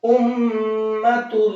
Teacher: मीम के ऊपर तशदीद है, और तशदीद मीम के ऊपर आती है तो उस मीम को हम नाक में छिपा करके पढ़ते हैं, गुन्ना करके पढ़ते हैं। इस तरह से आवाज को नाक में रोकेंगे तो ये आपका गुन्ना हो जाएगा।